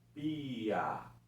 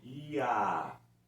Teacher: Eu posso ter ditongos que eles, quando são pronunciados, a primeira vogal é um pouco mais fraca que a segunda